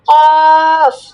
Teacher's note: জিহবার গোড়া তার বরাবর উপরে তালুর সঙ্গে লাগাইয়া একটি হরফ উচ্চারিত হয়।